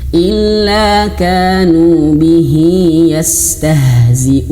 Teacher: Jangan bihi bihi tapi bihi betul-betul besar. Betul-betul h-nya itu dipangkal tenggorokan.